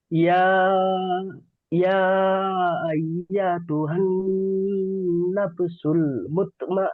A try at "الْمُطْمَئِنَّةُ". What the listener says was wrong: মুতমাইন্নাহ, গোলতা হা সাকিন। ইয়া আইয়াতু, এই ইয়াটি টান হয়ে যাচ্ছে।